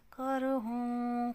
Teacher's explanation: قاف موٹا پڑھا جا رہا ہے، را بھی موٹا پڑھا جا رہا ہے کیونکہ را ساکن ما قبل زبر ہے